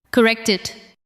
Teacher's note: The final sound of correct connects to it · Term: linking